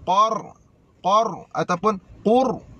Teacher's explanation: Ra yang mati ini tebal disebabkan qaf berbaris fathah.